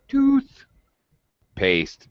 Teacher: the paste has secondary stress it's a low pitch but full vowel sound maybe a little louder it is a stress it is stressed but with a low